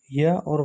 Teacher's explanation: इनका उच्चारण करते समय पहले ई, ऊ की ध्वनि आती है। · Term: अर्धस्वर